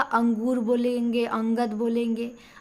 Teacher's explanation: अनुस्वार में केवल नाक होगा